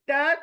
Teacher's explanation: आपकी जुबान जड़ को लगेगी दांतों के जड़ को लगेगी और जुबान दो तरह की शकल तियार करती है एक चौड़ी